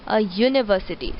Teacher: University, although university starts with a vowel U, but the sound is Y. But the sound is used as a sound of Y, a university.